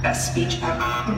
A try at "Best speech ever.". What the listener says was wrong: No, slow down. You have to go slow. You have to do it in verbal slow motion.